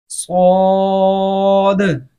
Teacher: सौद इसके अंदर सीटी की आवाज अच्छी खासी आनी चाहिए